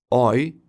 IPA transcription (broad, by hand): ɔɪ